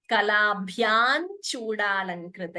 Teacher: So, the n is coming instead of the anuswara.